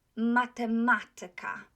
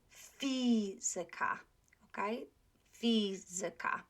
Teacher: those words ending tyka, or ika actually, not tyka, but ika, will be accented on the third from the last, not the second syllable.